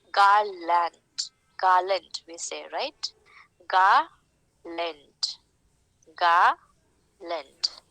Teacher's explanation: the first syllable will get the stress and the second syllable will not get the stress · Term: trochaic pattern